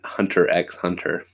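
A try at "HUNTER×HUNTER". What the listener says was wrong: oh, you don't pronounce the X.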